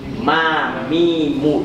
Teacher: mim sama ba, ma, mi, mu, dimulai dengan tertutup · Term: mingkem